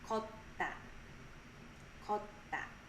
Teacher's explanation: 디귿 sound is following another 디귿 sound, then it should be tensified, which means this second syllable 다 becomes 따, not 다.